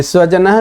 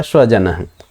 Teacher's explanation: दंत्य सकार के स्थान पर तालव्य सकार का उच्चारण कर दिया जाए तो बन जाएगा स्वजन